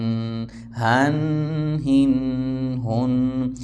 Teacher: ہ گلے سے نکلے گا سختی سے